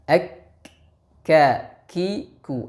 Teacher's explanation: Kenapa huruf kaf disifati dengan hams? Karena pada proses pengucapan huruf kaf, nafas atau udara mengalir dan tidak tertahan.